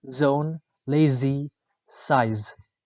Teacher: The description of z is voiced alveolar fricative.